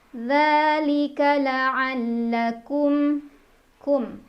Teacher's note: Ada idhar syafawi karena ada mim sukun yang bertemu dengan huruf ta, dibaca mim sukunnya jelas.